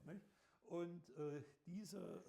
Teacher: If one holds the nose closed, one can no longer make an m. Then a plosive sound arises and with luck, one gets papa.